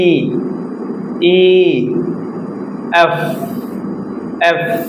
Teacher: আমি যখন এফ উচ্চারণ করব তখন আমার উপরের দাত নিচের ঠোটের সাথে লাগবে এবং হালকা বাতাস বের হবে